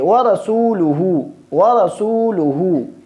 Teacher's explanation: जिस तरह वाव में होंठ गोल हो जाते हैं, इसी तरह इस उल्टा पेश में भी होंठों को गोल करेंगे, व रसूलुहु इस तरह पढ़ेंगे।